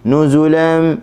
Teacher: nu bagi depan muncung, zu bagi depan muncung juga, lan okey, hujung tepi lidah letak di gusi, bagi atas, tanwin lagi.